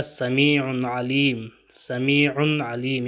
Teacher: یہاں تنوین کے بعد جو ہے حروف حلقیہ عین آیا ہے، یہاں پہ بھی اظہار ہوگا